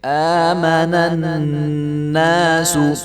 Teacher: آگے ہے آمن الناس، آما تو اس کی حمزہ کے اوپر بھی کھڑا زبر ہے تو اس کو بھی 1 الف کے برابر لمبا کیا جائے گا۔ آمن الناس، اور نون کو نون کے ساتھ جب ملائیں گے تو یہاں پہ غنہ ہوگا تو غنہ کر کے پڑھیں گے۔